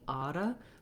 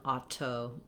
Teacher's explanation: It means it's going to sound more like a light D, auto, rather than auto. So we don't aspirate the T's when they're in between two vowels and the next syllable is not stressed. So think about it like a D, and then letter O is going to say vowel schwa. · this T is a flap. It means it's going to sound more like a light D, auto, rather than auto.